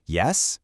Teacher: That upward pitch literally demands follow-up information. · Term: rising